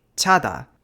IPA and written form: tɕʰa˦˥daː˧ (chada)